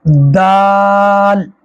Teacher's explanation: हा, खा, गले का वो हिस्सा जो मुंह की तरफ है, ऊपर का हिस्सा सबसे, वहां से अदा करेंगे, पूरा मुंह उसको मोटा पढ़ेंगे। खा, दाल, जुबान की नोक को दांतों की जड़ में लगाएंगे, फिर बोलेंगे दाल।